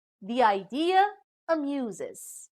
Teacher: from of the second example is the idea amuses a plus juncture is placed between the adjoining vowels e from the word the and i from idea another plus juncture is placed between the vowels ah from idea